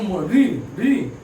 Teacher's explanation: री को जब उच्चारण करते हैं री, तो हमारी जो जीवा है ये ऊपर उठती है, और हमारा जो ऊपर वाला भाग है दांत, उसके जो पीछे कठोर भाग है वहां पर लड़ती है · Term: मूर्धा